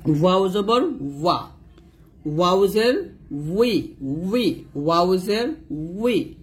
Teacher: দুই ঠোঁট গোল করে ওই ঠোঁট থেকে আপনাকে উচ্চারণটা নিয়ে আসতে হবে